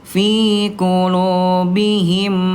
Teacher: kalau mim bertemu dengan mim maka dia dilebur dan ditahan. Kenapa? Karena huruf mim dia huruf gunnah, ya.